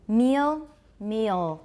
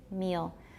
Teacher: And that's because a dark L, especially after front vowels, has a little schwa before it, sometimes.